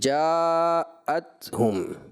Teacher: حمزہ واضح ہوگا، تحقیق کے ساتھ اس کو پڑھیں گے